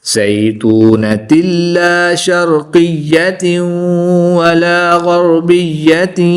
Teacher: दो ज़ेर की तनवीन के बाद या हरूफ यरमालून में से है तो यहाँ पर भी इदगाम माल गुन्ना होगा